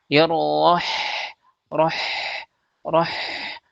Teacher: Karena kita tidak mengalirkan udaranya. Padahal huruf ha itu dia punya sifat hames namanya. yaitu udaranya me mengalir. Jadi kita alirkan udaranya supaya lebih jelas huruf ha-nya roh roh. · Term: hamas